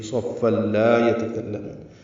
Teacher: ادغام کامل ہوا، لا الف مدہ ہے، 2 حرکات لمبا ہے. یتکلمون یا تا کاف باریک ہے، کاف کو لام سے ملانا ہے، منہ واو مدہ ہے، 2 حرکات لمبا ہے.